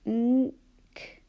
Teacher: Where we know what to write because our tongue is right at the top of our mouth and we can't hear g